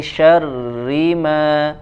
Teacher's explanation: tidak dibaca tebal atau menggema suaranya tapi dia ditipiskan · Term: ikhfa